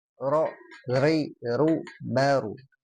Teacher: Huruf ro itu sama dengan zal, dia dari lidah ya. Lidahnya ditempel ke langit-langit mulut kita.